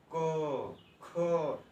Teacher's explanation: क, ख, कहाँ से आ रहा है, कंठ से आ रहा है।